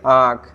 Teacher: मुख, आँख बोल रहे हैं तो मुंह से ज़्यादा निकल रहा है। आँख, तो ख बोल रहे हैं तो देखिएगा वायु ज़्यादा निकल रहा है